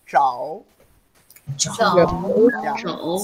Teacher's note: When you pronounce zhao, your tongue rolls up, and also if you close up your teeth up and lower, you cannot pronounce zhao.